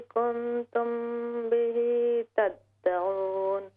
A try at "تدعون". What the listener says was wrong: تھوڑا اس کو اور لمبا کریں. تدعون.